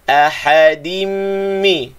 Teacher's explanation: Ahadim mi, tanwin bertemu dengan mim, musyaddad. Tanwin bertemu dengan mim, idgham ma'al ghunnah, panjangkan dengungnya.